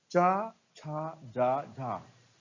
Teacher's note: चा वर्ग का उच्चारण स्थान तालु। तो ये चा वर्ग के सभी अक्षर हैं, इनका उच्चारण स्थान तालु होगा।